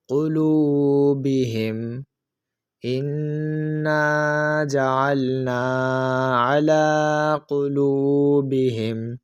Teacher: واو ساکن سے پہلے حرف لام کے اوپر پیش ہے، تو اس واو مدہ کو بھی ہم ایک الف یعنی 2 حرکات کی مقدار تک کھینچ کر پڑھیں گے